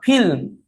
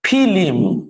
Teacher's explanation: তাকান কি পার্থক্য হইলো, এখানে যুক্ত বর্ণটা ছিল লয় ম, কিন্তু যুক্ত বর্ণ ভেঙে গেছে, ভেঙে মাঝখানে একটা রস্ব ই আসছে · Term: মধ্য স্বরাগম